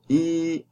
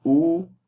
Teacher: So if you say heat, the best contrast is between E retracted and U. Because when you say E, it retracts your lips. That definitely is not rounded.